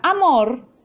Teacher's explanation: En la palabra amor, la sílaba tónica es mor y la átona es a.